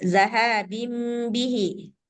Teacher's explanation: Memang cara membacanya harus dibalikkan daripada suara nun sukun kepada suara mim. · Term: iklab